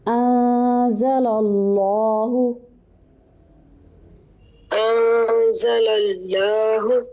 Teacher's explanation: لام ہے جو اسم جلالہ کا، اس کو موٹا کریں گے کیونکہ لام کے اوپر پیچھے زبر ہے